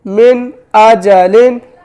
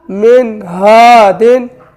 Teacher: نون سائن کے بعد دیکھیں حمزہ آ رہا ہے تو اظہار ہوگا، غنہ نہیں کریں گے